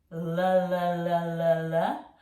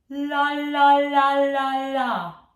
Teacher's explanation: Do not put the tip of the tongue on the bottom edge of the teeth, la la la la la, but in fact up behind the top teeth where the teeth meet the gums